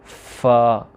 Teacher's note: ثنایا علیہ کے کنارے اور نچلے ہونٹ کا تر حصہ، اوپر والے جو 2 دانت ہیں، سامنے والے 2 دانت جو بڑے دانت ہوتے ہیں، ان کے کنارے اور نچلے ہونٹ کا تر حصہ جب ملائیں گے، جب فا پڑھیں گے پھر ہلکی سی ہوا بھی منہ سے خارج ہوگی ہونٹوں کی طرف سے، فا۔ یہ تھا ہمارا آج کا لیٹر جو شروع کیا۔